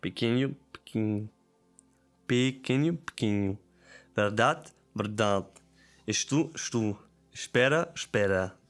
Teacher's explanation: They swallow vowels. Instead of pronouncing every vowel clearly, many unstressed vowels disappear.